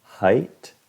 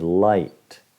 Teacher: Height suena como un poco acortado, pero es porque la T al final lo muerde, lo corte un poco. Pero en sí es height, light, aisle, sky, mind, fine.